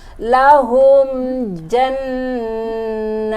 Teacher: Lahum, humnya mim sukun bertemu dengan ja itu adalah izhar safawi. Dibacanya jelas, nggak boleh ada dengung.